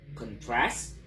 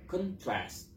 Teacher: Stresnya yang asalnya di the first syllable pindah ke second syllable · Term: perpindahan stres kata